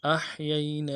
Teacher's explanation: یہی میں دو یا ہیں، یا لین ہیں، بغیر کھینچے پڑھیں گے، اور نون کے بعد کھڑا زبر ہے، اس کو ایک الف دال میں کھینچیں گے